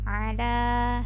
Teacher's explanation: Kemudian ala, ada huruf ain letaknya di tengah tenggorokan. Kemudian ala, la-nya di sini panjang 2 harokat.